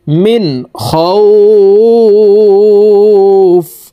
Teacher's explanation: وآمنهم, মিম নুন জের মিন, এখানে গুন্নাহ করা যাবে না, কারণ নুন সাকিনের পরে ইজহারের হরফ খ আসছে, এই কারণে এই নুন সাকিনকে গুন্নাহ ছাড়া স্পষ্ট করিয়া পড়ব। মিম নুন জের মিন, খ ওয়াও জবর খাও, ফা দুই জের ফিন, মিন খাও ফিন, ফাকে এখানে সাকিন করে ফেলবো আমরা, এখানে এইভাবে থামবো, দেখুন মিন খাউফ, وآمنهم من خوف।